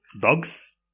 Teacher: Dogs, the s becomes z because it's influenced by g. The ending s is assimilated to z by the influence of the preceding voiced g. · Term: progressive assimilation